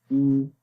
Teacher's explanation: جب پیش پڑھیں گے تو ہونٹ گول ہو جائیں گے لیکن لمبا نہیں کریں گے